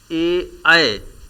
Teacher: ऐ का उच्चारण कंठ और तालु से संयुक्त रूप से उच्चारित किया जाता है, इसलिए इसे कंठ तालव्य कहा जाता है।